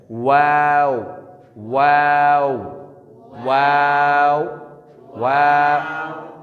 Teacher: دونوں ہونٹ گول کر کے نا تمام ملانے سے واو غیر مدہ